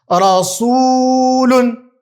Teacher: Këtu unë e zgjata sepse shohim se ka ardhur wawi si shkronjën e medit e zgjatëses.